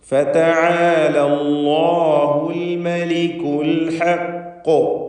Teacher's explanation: അൽ ഹഖ് ഖാഫിൽ ഖൽഖല കുബ്ര നൽകി വ്യക്തമാക്കി ശബ്ദം ചലിപ്പിച്ചുകൊണ്ട് സുക്കൂൻ നൽകി വഖഫ് ചെയ്യണം. ഖാഫിന് തഫ്ഖീമും നൽകേണ്ടതാണ്.